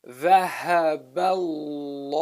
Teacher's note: there's no kasra, so the name of Allah is a heavy pronunciation of the lam